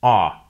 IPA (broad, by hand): ɑ